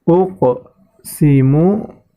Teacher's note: Uqsimu, di situ terdapat huruf qaf sukun ya, huruf qaf termasuk baca huruf qalqalah ya, maka harus dipantulkan.